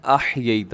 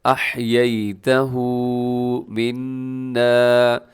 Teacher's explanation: نون پہ غنہ نہیں ہے، الٹا پیش کو لمبا کرنا ہے۔ احییتہ منا، پھر فاحیہ، یہ ہی کو لمبا کرنا ہے، علی الاسلام، ومن توفیتہ، یہاں الٹا پیش ہے تو اس کو بھی کھینچ کے پڑھنا ہے۔